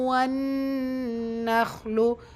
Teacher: நூனில் நூன் முஷத்தா குன்னா செய்யணும்.